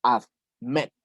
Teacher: La última sílaba está acentuada.